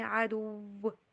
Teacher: وی والی ساؤنڈ کے اوپر نہیں بلکہ ڈبلیو والی ساؤنڈ کے اوپر اس کو سٹریس دیجیے